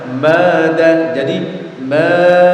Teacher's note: Terus kemudian di pelajaran berikutnya kita belajar tentang masalah mad dan tasydid ya. Artinya ketika ada bacaan mad ya, kemudian bertemu dengan tasydid, maka harus dibaca panjang sepanjang 6 harokat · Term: mad lazim mutsaqqal kalimi